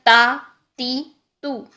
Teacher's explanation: जुबान की नोक सना औलिया की जड़ से लगानी है और पीछे से जुबान नीचे ही रखनी है, ऊपर नहीं उठानी है